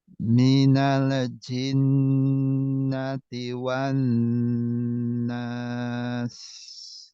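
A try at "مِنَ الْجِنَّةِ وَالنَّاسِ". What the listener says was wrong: Nah, lamnya jangan mantul. Minal jin.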